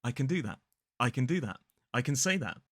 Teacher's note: There's a schwa in the weak form of can.